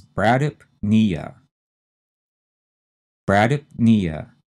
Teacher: Madding maddening to pronounce uh the next one has four syllables the stress again is on the knee part which is the third syllable · The next one has four syllables. The stress, again, is on the knee part, which is the third syllable. So we have two syllables we have to say pretty fast and run them together and put the stress on knee.